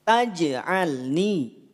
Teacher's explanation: Taj'alni, tidak taj. Tidak ada aliran napas, tidak ada percikan napas. Jim tidak punya sifat hams. Maka tak perlu dipercikan napasnya, tak perlu dialirkan napasnya.